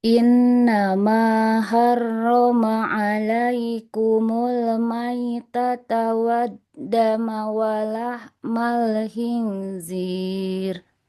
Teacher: Lam sukunnya enggak boleh memantul. Jangan walahmal.